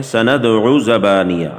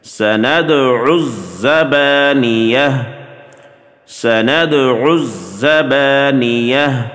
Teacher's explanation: بعض اس کو پڑھتے ہیں سَنَدْعُ زَبَانِيَهُ، عَيْن کو زا کے ساتھ نہیں ملاتے، حالانکہ زا کے اوپر تشدید ہے، عَيْن زا کے ساتھ سختی کے ساتھ ملائی جائے گی